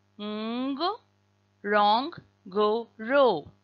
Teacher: you will pronounce that n but without sneaking in a vowel between the n and the g